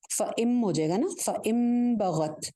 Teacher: آ گیا تھا، نون ساکن کے بعد آ گئی با، تو نون ساکن کے بعد جب با آتی ہے تو میں نے پہلے بتایا کہ کیا ہوتا ہے، نون کی آواز میم میں چینج ہو جاتی ہے